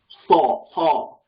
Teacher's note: Originally, it was saw, saw, which once again is like that T with a cup. It's like an S with a cupped tongue.